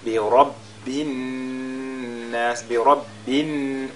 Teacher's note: nous avons la lettre Ra qui porte la fatha et donc qui est lue avec at-tafkhim